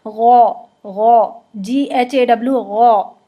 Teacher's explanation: آپ نے اس کے ساتھ AW لگانا ہے اور ہونٹ نہیں گول کرنے